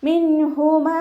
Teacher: നൂൻ സാക്കിനയ്ക്ക് ശേഷം ഇദ്ഹാറിൻ്റെ അക്ഷരമായിട്ടുള്ള ഹ വന്നു. നൂൻ സാക്കിനയെ വ്യക്തമാക്കി മണിക്കാതെ ഉച്ചരിക്കുക കേട്ടോ. നൂൻ സാക്കിനയ്ക്ക് ശേഷം ഹൽക്കിൽ നിന്നും പുറപ്പെടുന്ന 6 അക്ഷരങ്ങളിൽ ഏതെങ്കിലും ഒന്ന് വന്നാൽ നൂൻ സാക്കിനെയോ തെൻവീനിനെയോ നമ്മൾ വ്യക്തമാക്കി മണിക്കാതെ ഉച്ചരിക്കുക.